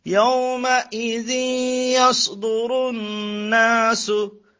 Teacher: নুনের মধ্যে তাসদীদ গুণ্য হবে এবং এক আলিফ টান হবে